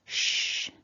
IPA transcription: ʃ